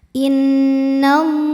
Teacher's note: Alif lamnya dinamakan dengan alif lam syamsiyah karena alif lam menghadapi huruf syamsiyah yaitu lam, maka alif lam tidak kita baca